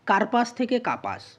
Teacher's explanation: দেখো, র ধ্বনিটাকে বোল্ড করা আছে, সেই রয়ের লোপ ঘটেছে, অর্থাৎ শব্দের মাঝে র ধ্বনির লোপ ঘটেছে বা র ব্যঞ্জনটির লোপ ঘটেছে। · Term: মধ্য ব্যঞ্জনালোপ